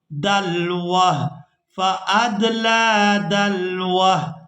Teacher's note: ہا کو ساکن کر دینا ہے، واو کو ہا ساکن کے ساتھ ملا کر ادا کریں گے